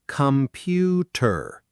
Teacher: >> Notice how the first come is quick and soft, almost come and the last tur is also soft, almost tur. Only the middle part pew is strong and clear. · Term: schwas